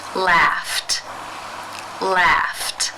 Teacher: the final sound of the infinitive is the unvoiced F sound since it's unvoiced it is case one where the Ed is pronounced as the T sound